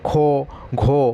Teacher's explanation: আমাদের শ্বাস বায়ু কিন্তু অনেক বেশি পরিমাণে নির্গত হচ্ছে বা ব্যবহার হচ্ছে যার জন্য এটাকে আমরা মহাপ্রাণ বলছি